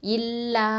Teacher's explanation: லாம் ஃபத்தா அலிஃப் மத்து லா 2 ஹரக்கத்தை கொடுக்கணும். இல்லா.